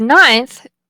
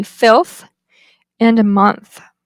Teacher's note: there ailer consonants can sometimes be produced with a dental articulation the tongue tip contacts the Upper Front Teeth in the word ninth the N becomes dentalized